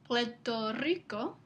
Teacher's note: En el Caribe es común escuchar a la gente intercambiar L, este sonido, por R, D. Por ejemplo, en el Caribe se puede escuchar Puerto Rico en lugar de Puerto Rico.